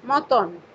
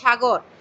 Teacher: মধ্য অ এর আগে যদি অ এবং আ থাকে তাহলে সেই ক্ষেত্রে সেই অ এর উচ্চারণ ওকারের মতো হয়।